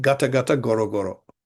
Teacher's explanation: in mere reduplications of roots beginning with G as gata gata goro goro, it is not nasalized